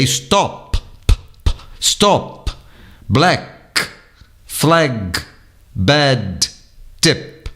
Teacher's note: as consoantes finais são cortantes rápidas quase inaudíveis